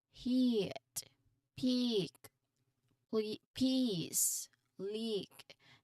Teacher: This section highlights the IPA symbol E, a visual of a mouth shape which perfectly matches what we discussed earlier. The lips spread wide, almost like a smile, and the tongue high and forward. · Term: E sound